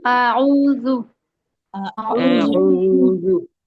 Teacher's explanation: اور عین جو ہے وہ حلق سے ادا ہوگا، حلق کے درمیانی حصے سے